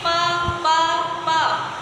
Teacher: हम प बोलते हैं तो हमारे दोनों ओठ जो है वो आपस में मिलते हैं। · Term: औष्ठ वर्ण